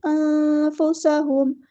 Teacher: سین میں سیٹی واضح کریں گے. ہاں سمپل ادا کریں گے اور میم کو لمبا نہیں کریں گے. انفسہم ایسے نہیں کرنا.